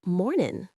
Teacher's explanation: The G often gets dropped, so it's almost mornin'.